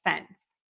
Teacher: my tongue also touches there for that t sound then so when I'm pulling my tongue away from that n Sound moving to that s you might hear a little T there